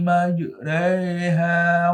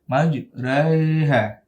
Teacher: Cara bacanya mencondongkan alif kepada kasroh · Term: imalah